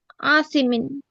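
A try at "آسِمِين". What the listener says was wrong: ఇక్కడ దీర్ఘం తీయకూడదమ్మా. ఆ ఆల్లో మొదటి ఆ చదవాలి. ఇక్కడ హంజా ఫథా ఆ. లేదు, అసీమిన్. హంజా ఫథా ఆ, సా కస్రా యా సుకూన్ సి, అసీ, మీమ్ కస్రతేన్ మిన్, అసీమిన్.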